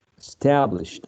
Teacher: stress primary stress on the second syllable